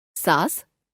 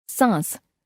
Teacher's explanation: केवल मुंह से वायु बाहर निकालकर तथा मुंह के साथ-साथ नाक से भी वायु बाहर निकालकर